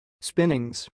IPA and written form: 'spɪnɪŋz (spinnings)